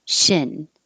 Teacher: if it sounds like sheen your tongue is too high keep it a little lower